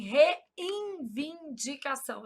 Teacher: A gente nasaliza esse N na pronúncia. A gente fala assim, reivindicação.